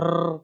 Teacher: प्रकंपित या फिर इसे कंपित भी कहते हैं। रा को बोलते समय आप अपनी जीभ में कंपन कर सकते हैं, जैसे छोटा बच्चा होता है जब वो घोड़ा गाड़ी को चला रहा होता है तो रर करके आवाज करता है।